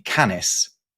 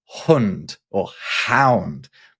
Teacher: So for example, that's how you end up with the Latin for dog being canis, but the standard Germanic word for a dog being along the lines of hund or hound, right? Because the c sound becomes a h sound in the Germanic languages